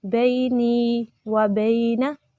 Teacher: پچھلے نون کو ہم یا مدہ کی وجہ سے لمبا کر رہے ہیں اور اگلا نون ہم نے حرکت کی وجہ سے لمبا نہیں کرنا